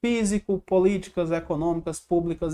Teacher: A sílaba mais forte é a antepenúltima. Então, em todas elas, a gente vai ter que todas são pela mesma regra, que é a regra das proparoxítonas.